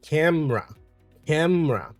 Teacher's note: You would see that the E in that sound, it's basically not there. It's completely omitted.